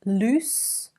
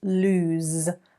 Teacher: Double O, oose. Loose versus lose with a Z sound at the end.